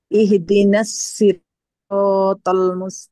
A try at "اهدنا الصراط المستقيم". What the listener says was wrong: সিরাত তাল হয়ে গেছে, তল ত মোটা আওয়াজে পড়তে হবে।